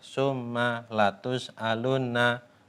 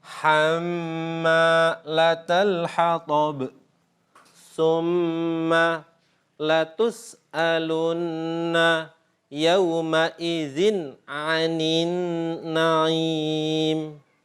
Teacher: harus kita tunjukkan gunnahnya itu, dengungnya itu selama apa itu satu huruf atau dua harokat atau dua ketukan. Tapi banyak ulama yang berpendapat bahwa gunnah di sini yang satu huruf itu atau dua harokat itu tidak bisa disamakan atau dikonversi dengan satu huruf dua harokat yang terjadi pada mat.